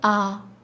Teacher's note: الف یہ حرف منہ کے خالی حصے سے ادا ہوتا ہے